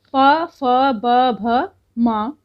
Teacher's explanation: और प से लेके माँ तक ओष्ठ कहेंगे।